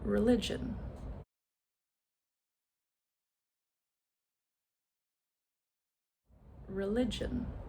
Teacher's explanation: So, where's the schwa? It's that first syllable, religion, and it is spelled with an e.